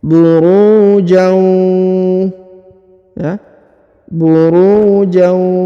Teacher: huruf tanwin ya harokat an bertemu dengan huruf waw berharokat tasdid, maka dia ditahan, ditekan, didengungkan 2 harokat